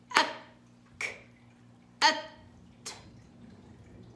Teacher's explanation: بنجيب شدة وبعدين بنجيب همس